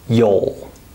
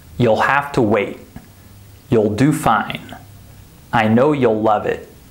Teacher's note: notice that there's no ooh sound there's an o sound